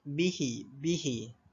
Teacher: Kadar bacaan bagi hukum mad silah qasirah ni pula dibaca dengan kadar 2 harakat sahaja ketika menyambungkan bacaannya.